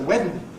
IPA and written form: ˈwedn̩ (wedding)